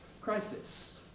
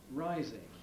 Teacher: Crisis, the I is clipped, rising it isn't, because the S, first S in crisis, is voiceless. The S spelling in rising corresponds to a voice.